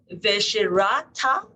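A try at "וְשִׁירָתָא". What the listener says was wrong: The shirata. You have to hear the E.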